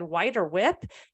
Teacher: if you've ever said white or whip, you've dropped your H's, because it was supposed to be white and whip. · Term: H dropping